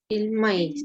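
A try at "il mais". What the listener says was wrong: Esta es una palabra muy parecida al español, pero el acento está en la A, ¿vale? No es el maíz, sino il maíz.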